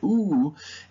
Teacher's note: ooh has no high frequency components. They're completely gone.